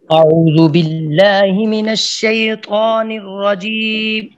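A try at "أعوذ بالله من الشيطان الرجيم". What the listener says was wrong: اف سب اعوذ کی ذال کو آپ نے اعوذ کی ذال کو آپ نے زا پڑھ دیا ہے, سخت کر دیا, اس کو نرم کریں. اعوذ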